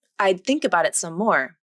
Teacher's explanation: the tongue placement of the D consonant is pretty much in the same place as the TH consonant, with the tongue tip between the upper and lower teeth. This is an unreleased D consonant, so you should feel that the tongue tip comes between the front teeth.